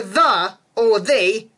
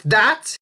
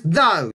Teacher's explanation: Now you know the hard 'th' sound? It should be D-H since it's voiced